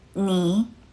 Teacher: 你 uses the 3rd tone. It starts mid, deep down, then rises back up, like a little valley with your voice.